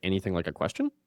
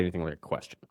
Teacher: It's a statement of fact when you drop that tonality at the end. It sounds insecure and needy when it's uptalk at the end is what they call it.